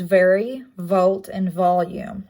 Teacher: fricative is the uh v which would make the v sound it's a labial dental it is voiced